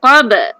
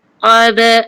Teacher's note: Ba ni ba qalqalah sughra sebab dia pertengahan kalimah qalqalah yang ringan. Qab. Jangan qab tak payah tekan sebab dia sederhana kan.